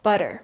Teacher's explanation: Notice how those two middle Ts become Ds.